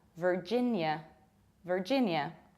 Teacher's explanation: Virginia, very strong R, ver, and very reduced A.